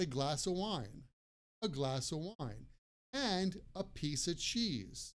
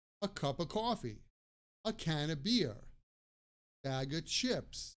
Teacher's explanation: and of sounds like uh